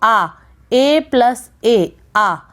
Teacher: दीर्घ स्वर के उच्चारण में एक मात्रिक यानी कि जो ह्रस्व स्वर है उससे दुगना समय लगता है उसके उच्चारण करने में। ठीक है, जैसे आ की अगर बात करें तो आ, A+A, आ, यानी कि इसके जो उच्चारण में है वो ह्रस्व स्वर से दुगना समय लग रहा है।